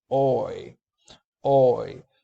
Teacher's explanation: the tongue glides from a low position to a high position near the roof of the mouth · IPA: [ɔɪ]